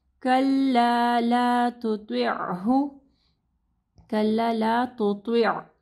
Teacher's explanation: کلا لا تطعہ کلا لا تطع اب دیکھیں یہاں پہ تا ہے اور پھر اس کے بعد تو ہے، ٹھیک ہے. تو تا کو جو ہے نرم پڑھنا ہے، تو کو ہیوی پڑھنا ہے